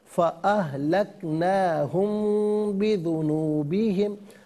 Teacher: मीम साकिन के बाद बा आ रहा है तो मीम साकिन को गुन्ने के साथ पढ़ेंगे